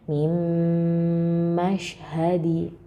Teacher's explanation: Mim jadi bukan min gitu ya, langsung ke mim.